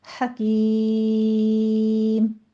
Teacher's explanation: اظہار حلقی ہے، حکیم میں ہا وسط حلق سے پڑھنی ہے، اس کے ساتھ کاف موٹا نہیں کرنا، اپنے کاف باریکی رکھیے گا ، حکیم، مد عارض وقفی ہو جائے گی، 6 کاؤنٹ کرنے